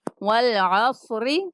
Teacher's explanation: را کے نیچے زیر ہے اس لیے را کو باریک پڑھیں گے